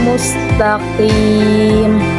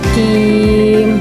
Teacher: Qim bukan kim, karena makhraj huruf qa berada di pangkal lidah bagian belakang